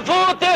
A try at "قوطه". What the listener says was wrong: فوطه ايه يا ابني؟ اسمها قوطه مش فوطه.